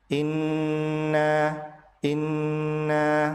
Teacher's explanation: in ditahan 2 harokat karena nun tasdid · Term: gunnah